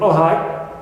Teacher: High fall, it means it starts from the highest pitch, clear, to the lowest pitch.